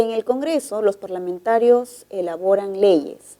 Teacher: el tono es descendente es una oración enunciativa